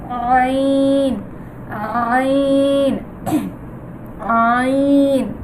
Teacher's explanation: আইনটার উচ্চারণ আইন হলকের মাঝখান থেকে হবে